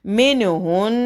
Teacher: نون مشدد کا غنہ ہوگا